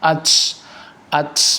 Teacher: Atau misalkan lagi huruf yang lemah seperti huruf ee ta ya, huruf ta di situ ada sifat hames. Itu sifat yang sangat lemah maka tidak boleh dikeluarkan secara berlebihan